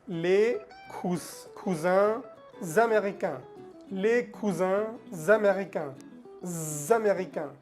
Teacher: La S de cousin la conectamos con la palabra américain. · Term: liaison